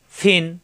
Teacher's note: ফা দুই জের ফিন, উপরে দুই দাঁতের আগা, নিচের ঠোঁটের পেটে লাগবে, মাকড়াস ঠিক রেখে উচ্চারণ করতে হবে।